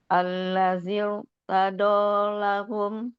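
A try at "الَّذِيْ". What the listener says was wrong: Ya, takrirnya masih kurang. Jangan zir. Itu lamnya masih kurang takrir. Al-lahir. R- R-nya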